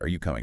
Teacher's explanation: Your voice goes up on coming. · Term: rising intonation